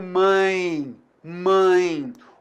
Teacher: Então, eu tenho a vogal an e a semivogal I aqui.